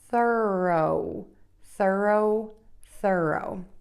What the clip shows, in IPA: θɜroʊ